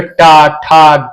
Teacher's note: जिन व्यंजनों के उच्चारण में जिभुआ का अग्र भाग को कठोर तालु के पिछले भाग यानी मूर्धा को स्पर्श करना होता है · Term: मूर्धन्य व्यंजन